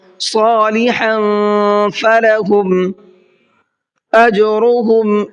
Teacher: جیم میں قلقلہ کریں گے اس لیے کہ جیم حروف قلقلہ میں سے ہے اور اس کے اوپر جزم آ رہا ہے۔